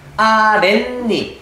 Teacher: 뒷소리의 니은 미음 앞에서 니은 소리가 덧나는 경우